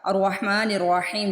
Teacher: تو قاعدہ کیا تھا، حمزۃ الوصل وصل کی صورت میں نہیں پڑھا جاتا، الرحمن الرحیم جب میں نے یہاں پہ وصل کیا تو میں نے الف کو میوٹ کر دیا، الف کو نہیں پڑھا، نون کو ڈائریکٹ را سے ملا دیا، لیکن یہاں پہ جو حمزۃ الوصل سٹارٹنگ میں تھا وہاں پہ مجھے اعراب لگانا تھا۔